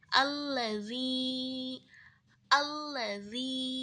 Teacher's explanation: ya Mad itu dibaca dengan memanjangkan bunyi i yang berharakat kasr sepanjang dua harakat